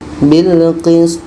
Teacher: To mati, to sukun, hukumnya qalqalah kubra, ada pantulan.